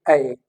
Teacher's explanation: the tongue is lowered and the mouth is open and it is being produced at the front of the mouth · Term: ओपन फ्रंट